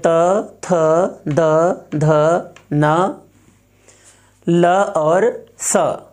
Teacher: ऋ त वर्ग यानी त थ द ध न ल और स, इसका उच्चारण स्थान है दंत